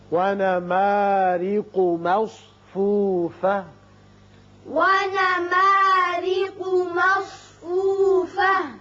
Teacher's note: را کے نیچے زیر ہے، اس کو باریک پڑھیں گے